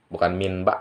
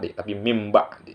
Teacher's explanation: Tidak halki, idgham Iklab ya. Nun mati menghadapi ba. Bacanya mim.